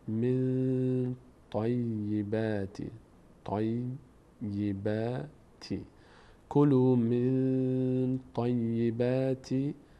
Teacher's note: نون مخفی میشه در بینی و از بینی ادا میشه به همراه مقدار توقف روی اون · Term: قاعده اخفا